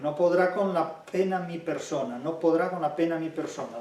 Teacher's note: Fíjense la oclusiva sorda, la p. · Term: oclusiva bilabial sorda